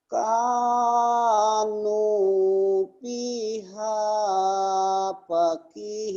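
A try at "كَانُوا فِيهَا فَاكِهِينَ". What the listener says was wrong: Fa-nya panjang. Fa-nya panjang, fa-nya panjang. Kanu fiha fakihina, kanu fiha fakihina, kanu fiha fakihina, kanu fiha fakihina.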